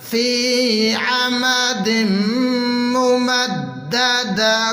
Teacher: دم عمد ممددۃ، تا پہ غنہ کریں گے تنوین کی وجہ سے۔ تل ممددۃ، وقف کی صورت میں تا ساکن ہو جائے گا